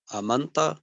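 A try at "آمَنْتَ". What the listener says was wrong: आमंता, आ को लंबा करके जी, नहीं, आ को लंबा करना बड़ा इंपॉर्टेंट है। देखिए अगर आप लंबा नहीं करेंगे ना तो ये फिर मजीद फी से वो 3 हरफी बन जाएगा, अमंतु वो बन जाएगा फालतू की तरह, हालांकि ये वो है नहीं।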